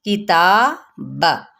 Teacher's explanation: काफ की ज़ेर को बारीक पढ़ते हुए ता पे अलिफ मद्दा और इसका कायम मुकाम है ये, जिसको एक अलिफ या 2 हरकत के बराबर।